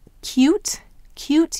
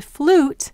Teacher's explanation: You can hear this in words such as cute, cute, you hear the long U with the yes sound. And if you contrast that to flute, you don't hear the yes sound, you just hear ooh, flute.